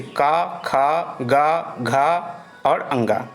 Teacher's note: क वर्ग ये कंठ से उच्चारित होता है। क वर्ग के जितने वर्ण होते हैं वो कंठ से उच्चारित होते हैं